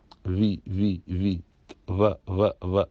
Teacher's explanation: और उर्दू में सारे व है जो वी की साउंड है तो वी में ऊपर के दांत नीचे वाले होठों में गीले हिस्से में लगते हैं